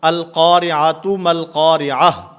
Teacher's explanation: گول تا یہ وقف کی حالت میں ہا سے بدل جاتی ہے